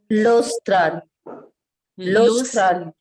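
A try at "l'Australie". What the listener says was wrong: Lostral E. Till E you have to. Lostrali. This I is to be pronounced as E.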